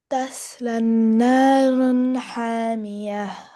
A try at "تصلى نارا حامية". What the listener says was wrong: First of all, you need to stretch la sound, tasla, and then ha sound should be clear.